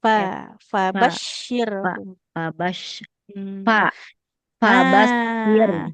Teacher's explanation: kalau mengucapkan huruf fa itu bukan bibir atas dan bibir bawah yang saling menempel tapi bibir bawahnya perut bibir bawahnya menempel ke ujung gigi sehari atas.